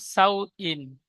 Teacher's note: ওয়াও সাকিনের ডান দিকে যাওয়ার এসেছে, একে অউলিন বলে। অউলিন নরম আওয়াজে তাড়াতাড়ি পড়তে হয়, টান দেওয়া নিষেধ